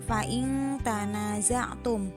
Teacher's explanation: bacaannya ikhfa. Alasannya nun mati atau nun sukun bertemu dengan huruf ta.